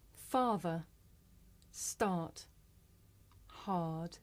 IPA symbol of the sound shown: ɑ: